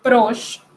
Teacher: La E final no se pronuncia